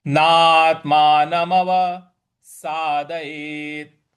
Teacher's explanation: यहां पे ना के बाद त है, उस पे थोड़ा सा बल लगाएंगे। यहां पे भी हम आघात देंगे।